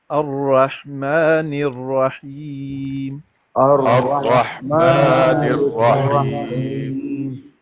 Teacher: یہ را میں نا تھوڑی سی تکریر پائی جاتی ہے، اس میں تکرار تھوڑا سا آتا ہے، اور وہ بہت زیادہ بھی نہ ہو، بالکل ہلکا سا ہاف سا ایسے نہ ہو.